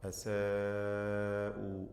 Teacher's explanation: അല്ലദീന അസാഉ മദ് മുത്തസിൽ വാജിബ് എന്ന ദീർഘം നൽകി 4-5 ഹറക്കത്തിൻ്റെ അളവിൽ അലിഫിനെ ദീർഘിപ്പിച്ച് പാരായണം ചെയ്യണം